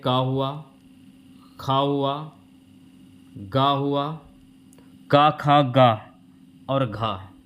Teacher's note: क ख ग और घ यह हो गए आपके कंठ से बोले जाने वाले वर्ण